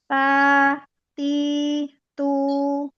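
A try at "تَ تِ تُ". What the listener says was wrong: Belum irja pada makhrajnya. Ta, ta, ta, ti, tu.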